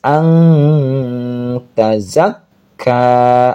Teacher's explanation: Ikhfa itu samar. Ang, lidahnya berada di makhraj ta ketika sedang ang. Ya, jadi namanya ini ikhfa aqrab.